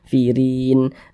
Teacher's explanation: Huruf ra memiliki tanda baca kasrah, dibaca tipis, dibaca tarkik